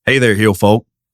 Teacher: you got to draw the syllables out a little longer and it's just a little twang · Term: Southern accent